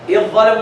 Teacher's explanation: Drop the dhal, stress the dha, idgham kamil.